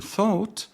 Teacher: the back of the tongue is raised to a mid position